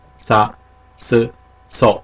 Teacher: 사, 스, 소는 S음의 사, 스, 소였었다. 치경음이 되겠죠. 치경음이라는 것은 혀 끝을 입니빨 뒤에 잇몸 쪽에 대고 발음하는 사, 스, 소 이렇게 발음이 되겠죠.